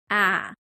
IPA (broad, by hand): æ